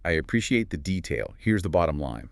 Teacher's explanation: a native speaker would likely give detail a little lift in pitch, emphasizing it, before falling down quite clearly on bottom line to signal the end. Yours had the right words, but missed that little musical rise and fall. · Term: pitch contour